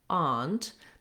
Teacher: some places they use the ah vowel and they say more like aunt that tends to be more of an east coast pronunciation it's also more similar to the british pronunciation so you